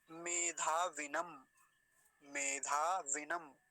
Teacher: विनम वकार पर देखिए छोटी ई की मात्रा है, तो छोटी ई की मात्रा ही बोलेंगे, जल्दी ही बोली जाएगी, उसको लंबा नहीं खींचेंगे।